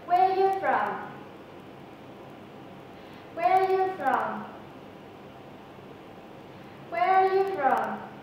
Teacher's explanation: Thứ hai, các bạn hãy chú ý luyện tập cách chuyển nhuần nhuyễn từ phụ âm sang r trong từ from, fr, from. Và thứ ba, các bạn hãy nhấn giọng cao hơn vào các từ where và from vì đây là các từ nội dung của câu